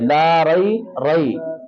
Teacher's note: अब ये रा जो है ये इसको मोटा करके पढ़ेंगे